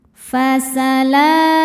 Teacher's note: La ada hukum mad tabi'i muqaddar sebab huruf lam berharokat fathah panjang. Cara bacanya dipanjangkan 2 harokat.